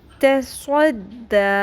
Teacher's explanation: تا کو باریک رکھیں گے، تو نہیں بنانا، اور صاد کو پر رکھیں گے، سین نہیں بنانا، باریک نہیں کرنا